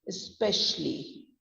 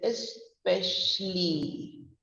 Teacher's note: ES is going down, PESH is going up, and U and UL and the LEE.